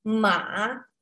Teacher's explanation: nada ketiga, nadanya berbentuk V, ya. Jadi dia ke bawah, turun, kemudian naik lagi. Ya, seakan ada cengkoknya, ya.